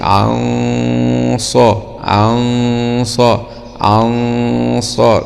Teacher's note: طيب، هنا حرف مفخم من حروف الاستعلاء جاء بعد النون الساكنة، فغنة الإخفاء هنا تكون غنة مفخمة تتبع الحرف الذي يأتي بعده